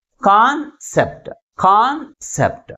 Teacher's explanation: కాన్ అనేది సెప్ట్ అనే second syllable కంటే ఎక్కువ ఫోర్స్గా పలుకుతుంది కాబట్టి ప్రైమరీ స్ట్రెస్ని ఫస్ట్ సిలబల్ ముందు ఉంచుతాం.